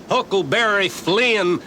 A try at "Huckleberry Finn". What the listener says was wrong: Finn. He was Huckleberry Finn, not Flynn. Ain't it the decent thing to pronounce the poor dead loafer's name right?